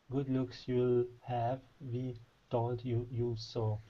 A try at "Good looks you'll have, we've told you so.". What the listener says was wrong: More V sound in we've. We've told you so.